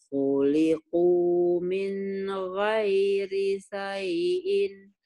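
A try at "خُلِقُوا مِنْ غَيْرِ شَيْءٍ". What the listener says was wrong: shinnya nggak keluar. Khuliqu min ghairi syai'in. Khuliqu min ghairi syai'in.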